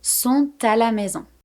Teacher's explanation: normally I would never pronounce this final T here of sont. But because the next word starts with a vowel, I'm doing it. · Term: liaison